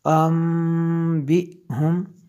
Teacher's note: اچھا، جب جوڑ کے ساتھ پڑھیں گے اس کو ان پڑھیں گے، جب با بھی ساتھ میں لائیں گے تو اس کو جو ہے ام بھی پڑھیں گے، کیونکہ نون ساکن کے بعد با ہے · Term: انقلاب